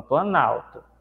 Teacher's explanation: Vejam que a palavra plano perdeu o O e se juntou com a palavra alto. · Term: aglutinação